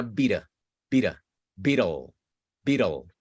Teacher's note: Y aquí, justo antes de la L, hay otra vocal que usted se la imagina. Siempre imagínese una vocal antes de la L, una pequeña schwa.